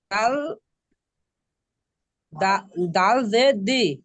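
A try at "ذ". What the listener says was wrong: জাল, দাল নয় এটা জাল, জাল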